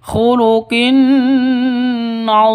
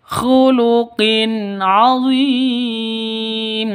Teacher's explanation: tanwin bertemu dengan Ain jelas terang tidak boleh disentak tidak boleh didengung khuluqinim salah khuluqin NIM salah yang betul khuluqin adzim